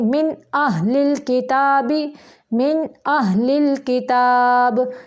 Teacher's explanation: اخرجت الارض اخرجت الارض، من اہل الکتاب، من نون ساکن کے بعد حمزہ آ گیا ہے یعنی حروف حلقی میں سے آ گیا ہے تو اس لیے ادھر اظہار حلقی ہوگا. من لمبا من نہیں کریں گے.